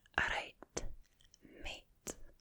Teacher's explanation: Like you would say alright. Or Glaswegian slang is alright with that R again, roll of the R's